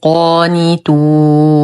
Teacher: لدينا ألف ساكنة ما قبلها مفتوح فهو مد طبيعي بمقدار حركتين. نقف على النون بسكون عارض قبله حرف مد، المد عارض السكون، يمد بمقدار 2 4 6 حركات وقفا ويعود إلى طبيعته حال الوصل.